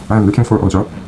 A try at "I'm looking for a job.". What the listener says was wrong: I'm 할 때 M이니까. 미음 발음 좋게 해줘.